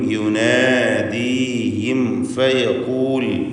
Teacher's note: സാക്കിന തമീമും ശേഷം ഫാഉം വന്നിട്ടുണ്ട്. ഇൽഹാർ ഷഫവി ബിശക്കൽ ഖാസ്, അതായത് സാക്കിന തമീമിനെ മണിക്കാതെ വെളിവാക്കണം.